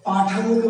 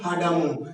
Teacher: প এবং ফ দুটোই অঘোষ